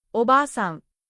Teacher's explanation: That extra a tells you to hold the a sound longer. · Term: long vowels